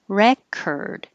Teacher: Re is the vowel as in head, re, and then the OR changes to ER, record. If it's the verb, now the RE changes to and you do say the OR, record, record.